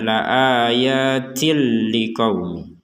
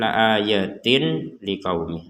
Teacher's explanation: Ada tanwin bertemu lam, maka kita masukkan tanwin ini kepada lam sehingga terbacanya la ayatil liqaumi.